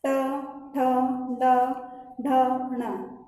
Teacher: अपन जब ट बोलते हैं तो ट बोलते वक्त हमारी जो जिह्वा है वो एक बार पलटी खा करके जो वायु है बाहर निकलती है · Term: मूर्धा